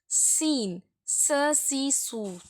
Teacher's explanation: சீன்னு சொல்லும்போது சசி சூ சொல்லும்போது ரெண்டு பல்லும் சேரும்